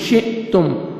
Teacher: شین زیر حمزہ جزم شئ، تا پیش میم جزم تم، شئتم، حمزہ کو مجزم ہے، جھٹکے سے پڑھیں گے، تا کو آپ نے باریک پڑھنا ہے، میم ساکن کا اظہار ہے، جلدی پڑھیں گے۔